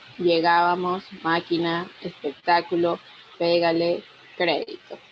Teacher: Las palabras esdrújulas son aquellas cuya sílaba tónica es la antepenúltima.